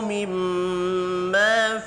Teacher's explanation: میم مشدد ہے، غنہ کرنا ہے، یہ بھی الف مدہ ہے، ایک الف کے برابر کھینچ کر پڑھیں گے۔